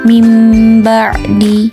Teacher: nun sukun atau tanwin yang bertemu dengan huruf ba maka berubah menjadi mim dan disertai dengan guna atau dengung panjang bacaan iqlab adalah satu Alif atau 2 harokat huruf iqlab